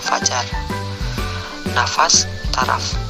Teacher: kriteria bunyi labiodental geseran tak bersuara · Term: Konsonan F